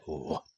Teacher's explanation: दंत और ओष्ठ से उच्चारण होता है